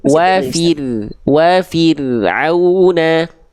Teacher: Jadi ro-nya jangan terlalu banyak getarannya, tapi jangan mantul juga